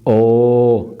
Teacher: कंठ का प्रयोग और ओठों का भी प्रयोग हुआ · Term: कंठ ओष्ठ